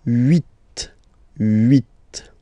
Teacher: Okay, then here final T is pronounced, so huit, huit. Remember in French this H letter here, okay, doesn't exist phonetically, so we don't really pronounce it